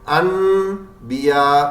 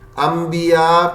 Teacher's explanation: نون ساکن کو ہم با ہونے کی وجہ سے بدل دیتے ہیں میم سے، انبیاء پڑھ لیتے ہیں، ایسے ہی کرتے ہیں نا، انبیاء۔